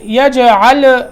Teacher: یجعل، یہاں لام میں قلقلہ نہیں ہے. یجعلم یجعل، یہ لام میں قلقلہ نہیں کرنا.